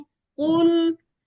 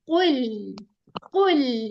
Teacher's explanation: जहां पे दौमा आ रहा है ना वहां पे राउंडिंग होनी है। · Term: लिप्स की राउंडिंग